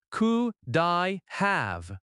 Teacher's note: The d connects smoothly to I.